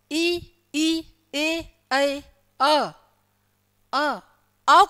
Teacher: अ को बोलोगे तो जीभ थोड़ी नीचे की तरफ चली जाती है ना। जीभ कहाँ चली जाती है, थोड़ी नीचे की तरफ चली जाती है, यानी कि मध्य। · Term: मध्य स्वर